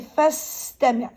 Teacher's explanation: But because we're connecting, you're going to say fastami'. So totally, you drop the sound of Hamza. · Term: Hamzat al-Wasl